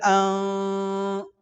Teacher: اخفے کی آواز کچھ منہ سے آئے گی اور کچھ ناک سے، اس کو چھپانا کہتے ہیں۔ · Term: اخفا